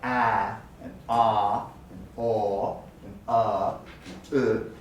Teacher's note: importantly the tongue is not raised that's the key point the tongue is either in a rest position or lowered to create a wide airflow patch so it sounds like ah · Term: open vowels